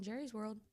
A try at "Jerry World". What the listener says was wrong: Jerry World. I was one of those that used to call it Jerry's World. It is Jerry World. No, it's Jerry World. But it is actually trademarked as Jerry World. Like Disney World. It's not Disney's World.